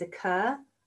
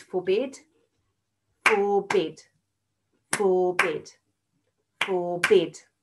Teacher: how that last bit of the root word comes out a little bit louder when i'm saying it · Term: stress